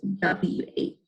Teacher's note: you kind of make a breathy sound at the end